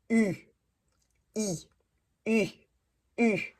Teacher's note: Un peu plate et plus U. La langue est centrée, alors pas en haut de la bouche, un U au milieu.